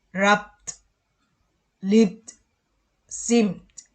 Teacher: Nah, kalau yang voiced, final ed katanya is pronounced the if the simple form of the verbs end in a voiced sound, as in be. Kalau voiced sound itu agak bergetar berat gitu ujungnya